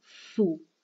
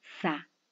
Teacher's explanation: Miremos la boca, los labios redondeados al decir su y distendidos al decir sa.